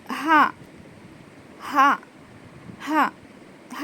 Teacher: हलक के नीचे वाले हिस्से से अदा होता है